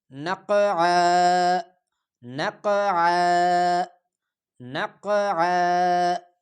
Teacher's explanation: وقف کی صورت میں جب ہم اس پہ سٹاپ کریں گے تو دو زبر والا تنوین ایک الف کی مقدار کھینچا جائے گا، ایک الف کی مقدار پہ تبدیل ہو جائے گا۔